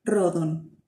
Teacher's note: no suena tan vibrante como la erre del español suena un poquito más corta